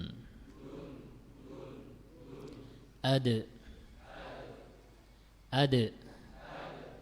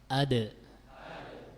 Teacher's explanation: Di situ keluar huruf dal. Dal ini memiliki sifat qalqalah, sehingga ketika sukun kita baca dengan sifatnya yang memantul